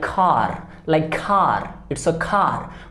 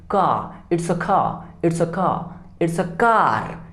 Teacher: For example, in the word car, C-A-R, car, Americans say it with a strong R sound like car, it's a car. But in British English, the R is softer, so it sounds more like car, it's a car, it's a car, it's a car.